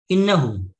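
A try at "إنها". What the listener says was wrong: হাটা একটু লম্বা করে বলবেন।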